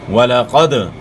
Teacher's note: تو یہاں دال حروف قلقلہ میں سے ہے، اور دال ساکن ہے، تو اس لیے دال میں قلقلہ ہوگا